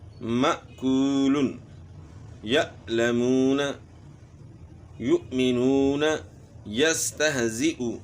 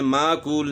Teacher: حمزہ جو ہے جھٹکے کے ساتھ پڑھا جاتا ہے، جھٹکے اور سختی کے ساتھ پڑھا جاتا ہے